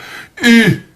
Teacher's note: la voix u se forme en rapprochant les dents sans les joindre entièrement et allongeant les deux lèvres en dehors les approchants aussi l'une de l'autre sans les joindre tout à